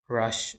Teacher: in rush, we have Sh sound, which is also voiceless